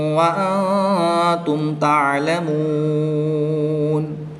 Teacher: ساکن کے بعد حرف با اور میم کے علاوہ حرف تا آ گیا تو یہاں پر اظہار شفوی ہوگا۔ وقف کی حالت میں مد عارض ہوگی تو یہاں پر 2 اڑھائی الف تک کھینچ کر پڑھیں گے۔